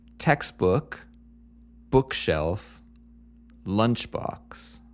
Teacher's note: they all seem to have the emphasis on the first word like the first syllable of the compound noun